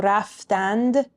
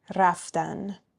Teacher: in spoken Persian you know we drop that D sound at the end · we drop that d sound at the end. So raftand sounds like raftan.